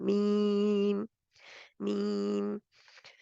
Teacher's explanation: इसको यानी जज़्म के साथ जल्दी नहीं पढ़ना, जो भी लेटर हम पढ़ रहे हों, वरना इसकी खूबसूरती ख़त्म हो जाती है। मीम में गुन्ना पूरा करके पढ़ना है, आगे बढ़ना है।